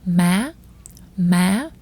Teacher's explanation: you want to start at a mid pitch and shoot your voice straight up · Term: dấu sắc